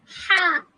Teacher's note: हा हुरूफ हल्किया में से है। इन हरूफ का मखरज हलक है और हा वस्त हलक से अदा होता है।